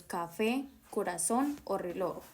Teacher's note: La fuerza de voz está en la última sílaba. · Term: palabras agudas